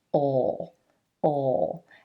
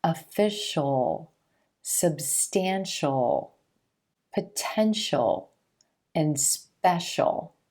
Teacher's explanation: the most common pronunciation of this suffix is just the dark L sound